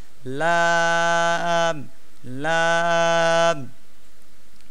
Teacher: জিহবার আগার কিনারা সামনের উপরের দাঁতের গড়ার সঙ্গে লাগাইয়া